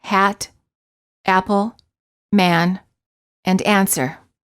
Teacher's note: the lips are open not rounded and the tongue is in the lowest position of all the front vowels the tongue is flat on the floor of the mouth the common spelling pattern for this sound is the letter A